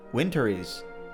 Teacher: The R from winter links to the word is winter is. The Z sound from is links to almost.